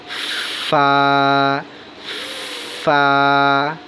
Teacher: অর্থাৎ যেখানে লিপস্টিক লাগানো যায় না, আমাদের যে ঠোঁট বাহিরে থাকে, শুকায় থাকে যেই জায়গাটা, ওই জায়গাটা না, শুকানোর পরে যে ভিজা থাকে, কথা বলে ভিজা ভিজা, ওইটাকে পেট বলা হয়। উপরের 2 দাঁতের আগার সঙ্গে আপনার নিচের ঠোঁটের পেটকে হালকা করে লাগাইবেন, বাতাস বের হবে,